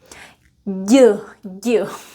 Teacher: And as well as the sound D, it is voiced. So your vocal cords vibrate. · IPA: /ɟ/